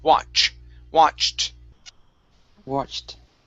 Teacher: instead of wash with an SH, it's CH sound